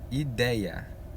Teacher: Ideia, ela tem uma vogal, uma semivogal, uma vogal. Saiu da estrutura do tritongo. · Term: ditongos com separação de vogal